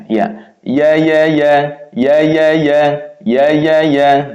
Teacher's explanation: Jadi tengah lidah menempel langit-langit mulut di atasnya. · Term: huruf ya